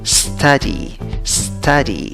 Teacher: Tienes una U en la palabra y acaba con una Y, pero en la pronunciación, en la primera sílaba, contando de izquierda a derecha, no tienes una U, tienes schwa, la que no es ni A, ni E, ni O. · en la segunda sílaba, ¿cómo pronuncias la Y? La pronuncias como una I larga · ¿Cuál es la sílaba que lleva la fuerza de voz? La primera sílaba, contando de izquierda a derecha.